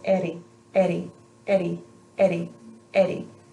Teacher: my tongue is just gonna very lightly flick up towards the top of my mouth behind my teeth